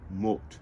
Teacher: that O, that little O, very high in the mouth, but not as high as oo, that is an omicron. And so it's a short sound, O, and there you go.